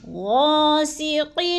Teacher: غا کو تھوڑا سا لمبا کرنا ہے، الف مدہ ہے،